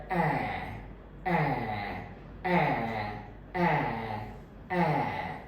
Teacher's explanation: तो ये near open sound है। फ्रंट है, फ्रंट का मतलब है कि मेरी जो जीभ का अगला हिस्सा है, टिप ऑफ द टंग है, वो मेरे नीचे वाले दांतों को जस्ट टच करता है। तो मेरी टंग आगे रहती है, आगे की ओर रहती है, मुंह में आगे की ओर रहती है। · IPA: /æ/